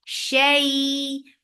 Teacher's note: Shay for fatha open jaws attached with ya. Make it long and make it soft